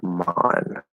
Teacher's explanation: The vowel is more open than when Americans say it.